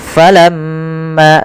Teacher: ada gunah di lafal mim dan wajib kita tahan dahulu sepanjang dua harakat